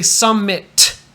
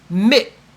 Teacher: This is called a stop, where you start to make a T, but then you stop. You stop the air coming out of your mouth.